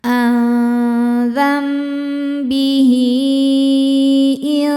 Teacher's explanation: Karena ada hair diapit dua huruf hidup dan setelahnya huruf hidupnya hamzah i. Ya, maka ha damirnya dipanjangkan seperti mad jaiz. Boleh empat, boleh lima harakat. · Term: mad silah thwilah